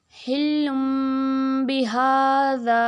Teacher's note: ہاں پہ کو لمبا کریں گے کیونکہ کھڑی حرکت ہے تو ایک الف کے برابر اس کو کھینچ کے پڑھیں گے، حلم بہذا۔ اس کے بعد ذا کو لمبا اس لیے کر رہے ہیں کیونکہ یہ حروف مدہ میں سے ایک ہے، الف مدہ ہے۔